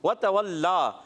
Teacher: ہونٹوں کی گولائی سے واو ادا ہوتا ہے